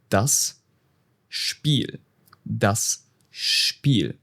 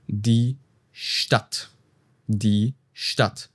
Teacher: when a word starts with SP or ST, which is quite common in German. The pronunciation shifts to SHP and SHT.